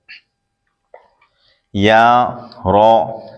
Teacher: یا زبان کے درمیان تالو کے درمیان سے ادا ہوتا ہے، رو زبان کا کنارہ دانتوں کی جڑ کی تالو کی جانب سے ادا ہوتا ہے